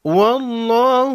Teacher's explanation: لفظ اللہ کے لام کو موٹا پڑھیں گے